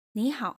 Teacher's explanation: When two third tone words are next to each other, the first one sounds rising and the second remains unchanged. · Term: third tone plus third tone, Third tone plus third tone